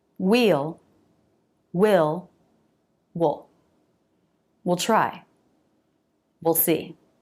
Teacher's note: the vowel here will usually be reduced to the I vowel, so it sounds like will, or with the schwa, wool